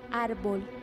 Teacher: A, abierta cuando está en sílaba trabada